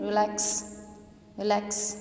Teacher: Stress आपका लैक्स पे आया। रिलैक्स as compare to रिलैक्स जो है वो ज़्यादा लाउडली बोला जाता है। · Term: सेकेंड सिलेबल